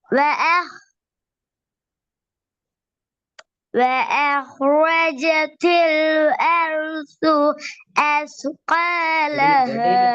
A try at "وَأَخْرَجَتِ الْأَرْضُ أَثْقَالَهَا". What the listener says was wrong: எட்டையில மூச்சு போகிறாது. எட்டையில மூச்செல்லாம் போகுது. என்ன இது? அப்படிதானா?